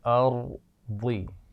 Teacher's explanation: را پر آواز کو کنٹرول کیجئے، قلقلہ جیسی آواز نہیں آنی چاہیے